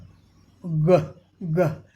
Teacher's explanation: Stop the air with the back of your tongue, अपने जीभ के पिछले पार्ट को उठा करके और तालू में सटा करके टॉप ऑफ योर माउथ, हवा को रोकेंगे, फिर हवा रुकेगी, फिर हवा खुलेगी।